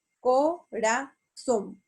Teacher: La palabra corazón se acentúa en la última sílaba. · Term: palabras agudas